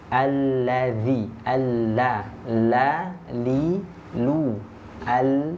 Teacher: huruf lam ini makhrajnya ada di ujung lidah ya thful lisan